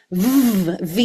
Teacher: we're now going to do some just little fricative rhythms, voiced fricatives. So, we're going to take a buzzy vv v sound.